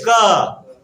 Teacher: मतलब जीभ जो होता है ना, जीभ कंठ के पास चले जाता है।